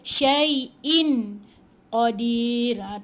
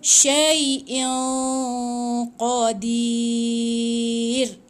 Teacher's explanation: tanwin ni dia kena baca dengungkan tebal dekat qaf. Dia ikhfa hakiki. Jadi dia kena dengung, dia tak boleh baca syai'in qadir.